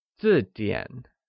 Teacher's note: is pronounced with a falling tone on i and a falling rising tone on a